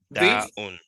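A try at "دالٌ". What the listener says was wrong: This will be Dalun. It ends with, yeah, dal. Ends with L-U-N. Dalun.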